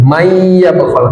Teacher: idgham digunah, nun sukun bertemu ya, dileburkan ya, lalu didengungkan. May yabkhal, tidak dibaca man tapi may yabkhal.